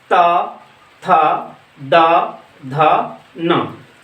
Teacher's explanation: इसको अगर हम लोग बोलते हैं तो हमारा जीभ कहाँ से टकराता है? दांत से टकराता है, इसलिए ये दांत से निकलता है। मतलब हमारा जीभ दांत से टच करके निकलता है। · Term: दंत वर्ग